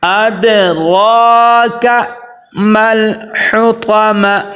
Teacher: دال کے اوپر دیکھیں کلکلا ہوگا، را کو ایک الف کے برابر ہم کیا کریں گے، لمبا کریں گے، کیونکہ را کے اوپر کھڑا زبر آگے، اس کو موٹا پر کر کے پڑھیں گے